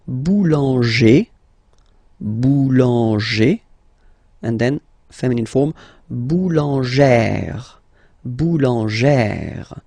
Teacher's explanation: So if you add this final E at the end, then you will have to put this accent here, accent grave. Remember, when you've got this E plus this accent grave, you pronounce it like E, really open E sound.